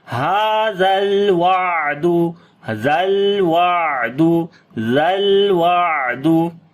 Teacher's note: On the lam we make tawassut quality, on the ain again tawassut quality as we say hadhal wa'du, dhal wa'du.